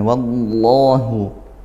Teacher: lafaz Allah didahului fathah maka dibaca tafkhim